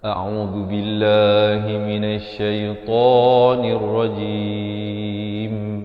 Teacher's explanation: Pastikan teman-teman dirahmati Allah, lafaz isti'azahnya itu A di pangkal kerongkong. Ain di pertengahan kerongkong bari dhammah dengan dua harakat. A'udzu di hujung lidah. · Himinasyaitan dua harakat. Nirrajim di akhir barulah dirapatkan mulut, menyempurnakan huruf mim